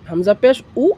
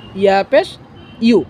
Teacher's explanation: এদিকে লক্ষ্য করবেন, হামজা পেশ উ, ইয়া পেশ উ। অনেকে উ বলে, আসলে উ না, ইউ।